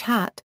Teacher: voiceless glottal transition, as in English hat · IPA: [h]